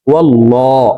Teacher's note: আল্লাহ শব্দের আগের হরফে জবর আছে এই কারণে এই লামকে ল বলে অর্থাৎ মোটা করে পড়ব